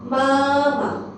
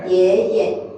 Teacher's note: Or neutral tone we will read it as a light and fast.